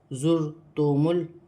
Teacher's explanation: را کو موٹی پڑھی جائے گی، را ساکن ہے